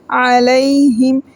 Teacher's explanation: ہا کو گلے کے آخری حصے سے پڑھیں گے